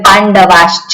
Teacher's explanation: વિસર્ગનો શું થાય શકાર થઈ જાય કારણ કે પાછળ શું છે તાલવ્ય ચકાર છે